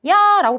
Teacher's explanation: 입이 가만히 있다가 조금 더 크게 벌어지잖아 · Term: 이중 모음